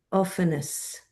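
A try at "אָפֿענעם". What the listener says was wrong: It's a mem. It's a mem at the end.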